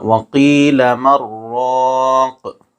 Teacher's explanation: وَقِيلَ مَنْ رَاقٍ، اور یہاں ایک اور قاعدہ ہے، نون ساکن کے بعد دوسرے کلمے میں حروف یرملون میں سے را آ رہا ہے اس لیے یہاں بغیر غنہ کے پڑھیں گے